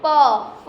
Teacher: तो इसमें सिर्फ लिप्स टच होते हैं आपस में